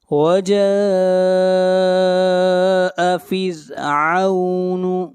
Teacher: یہاں پر را کو باریک پڑھیں گے، را سے پہلے زیر ہے۔